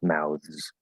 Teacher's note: fully pronounced, it's a voiced TH with a Z sound. And that's because the TH is voiced, it's S into a Z.